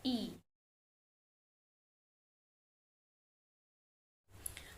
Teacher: Bunyi ketujuh pada kata salsabila merupakan bunyi vokal I. Tinggi rendah lidah tinggi atas, gerak lidah bagian depan, struktur tertutup, bentuk bibir tak bulat.